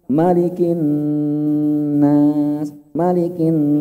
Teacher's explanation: Nun bertasdid ini levelnya tinggi. Maka perlu ditahan lama. Malikin nas, malikin, peran hidungnya lama di sini.